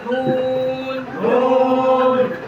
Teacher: জিহ্বার আগা তার বরাবর উপরে তালুর সঙ্গে লাগিয়ে